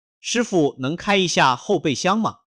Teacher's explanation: 一下的一，在4声下前变2声